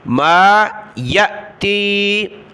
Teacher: حمزہ ساکنہ ہے جھٹکا دیا